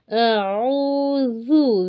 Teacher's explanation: ज़ाल के लिए ज़बान थोड़ी सी बाहर